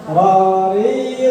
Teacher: Takrir itu artinya bergetar atau berulang-ulang. Nah, ketika kita mengucapkan huruf ro, otomatis ujung lidah kita bergetar